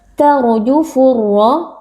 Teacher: Cara membacanya adalah membaca waw sukunnya dengan bacaan yang lunak dan halus. Tarjufu, ra sukun di sini dibaca tebal karena harakat huruf sebelumnya adalah fathah.